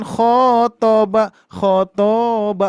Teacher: Oh, berarti yang harus dibaca panjang adalah kho-nya ya.